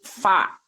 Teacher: huruf Fa huruf Fa itu dia syafatain tapi cara melafalkannya itu tidak menempelkan bibir atas dan bibir bawah tidak tapi bibir bawah ditempelkan ke gigi seri atas